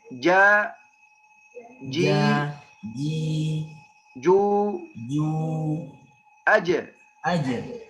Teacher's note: Al-jim harus makhraj jim dari tengah lidah.